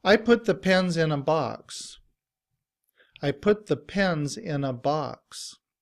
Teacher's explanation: In reduced form, we don't say a. We would use the sound of the schwah, which is the upside down e.